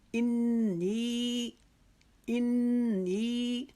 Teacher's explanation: हम नी को एक अलिफ के जितना लंबा खींच के पढ़ेंगे